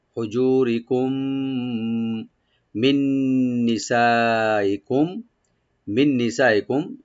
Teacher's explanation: মিন নিসাইকুম নি বলবো, সা আমরা মাদ্দে মুত্তাসিল 4 আলিফ টানবো, এখানে হামজাকে রাইট দিবেন।